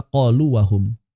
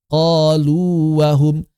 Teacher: Suara mad waw yang bertemu dengan waw konsonan. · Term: mad tamkin